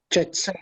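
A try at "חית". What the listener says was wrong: No, not chet. Say het. As in het, yeah.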